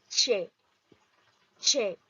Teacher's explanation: una consonante aflictiva y es la che para producir la che intervienen dos momentos en su producción un oclusivo seguido de un fricativo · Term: consonante africativa